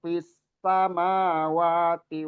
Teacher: sinnya itu lebih didesiskan lagi karena tasdid